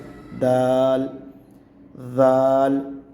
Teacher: زبان کو اوپر والے جو سامنے والے چار دانت ہیں ان کے پیچھے زبان لگا کے اس کو ادا کیا جائے گا۔